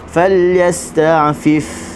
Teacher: Huruf ain falyasta', dia ada bainiah ataupun ada sifat macam spring ataupun anjal kita sebut